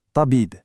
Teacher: Ce n'est pas un tas léger, c'est bien ce tabib profond et emphatique.